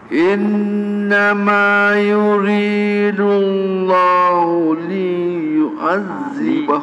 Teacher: li tak boleh panjang kalau panjang jadi mad asli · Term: li pendek